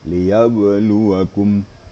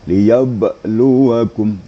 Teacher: Ini huruf ba ini bacaannya tidak begitu tahqiq ya. Agak sambil lewat aja baca ba yang sukun itu.